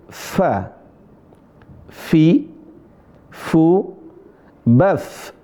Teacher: Perhatikan huruf fa. Cara bacanya di situ ada desis atau yang disebut hamas.